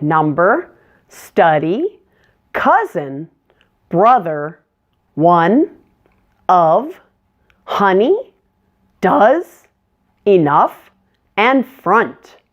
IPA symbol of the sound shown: ʌ